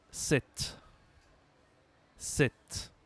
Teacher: Il y a le P avant le T. Mais on ne prononce pas le P. On ne dit pas Sepcepte, on dit 7.